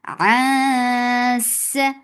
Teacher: Ain from your throat for fatha upon jaws, and there is ikhfa. This ikhfa is light, and you are hiding the sound of noon. You are going towards the makhraj of seen.